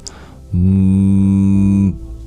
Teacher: The sound ṁ, which is dominant in the lips.